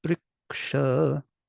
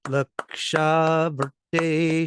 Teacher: If my lips are big, then the V is harder to make it become B more often. So Bengalis with big lips, they tend to pronounce the V like a B.